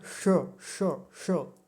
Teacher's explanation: हमारे मुख में ऊपर मूर्धा का स्थान होता है। जहां से ट, ठ, ड, ढ, हम इन अक्षरों को बोलते हैं। वहीं से ये मूर्धन्य शकार भी बोला जाता है।